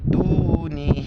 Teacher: مد ہے 4 الف کی مقدار کھینچیں گے